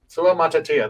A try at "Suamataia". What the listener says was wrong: Suamataia. You're putting a second E in it.